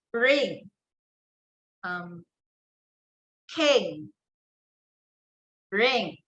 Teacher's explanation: there's the velar nasal, of course.